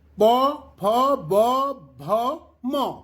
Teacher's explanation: यह उच्चारण स्थान होची ओष्ठ, सेति ओष्ठ्य बोली आमे नामित करि थाउ